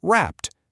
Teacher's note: If a verb ends in a voiceless sound like the P in rap, you add a T sound to make it wrapped.